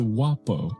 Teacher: guapo was pronounced similarly to wapo, with the final vowel often reduced to a schwa sound, making it sound like wop to English-speaking Americans.